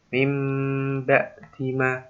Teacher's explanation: Mimba dima, tidak boleh mangap, tidak boleh membuka bibir, harus dirapatkan kedua bibir dan mendengung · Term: iklab